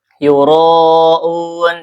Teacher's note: Karena dia ittisal ya dalam satu kalimat ya menyambung tersambung. Yuroun dibaca panjang empat atau lima harakat. Un ini mad arid sukun karena ada mad th'i yang sesudahnya huruf sukun ini ya. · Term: mad wajib muttasil